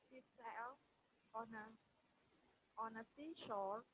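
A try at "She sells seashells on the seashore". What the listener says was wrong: Okay, first, correct these two sounds. Seashells, excuse me. Seashells. Not she, sea, sa, seashells. Seashells. Not sea, sea. Not seashells.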